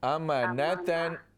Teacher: नून को लंबा न करें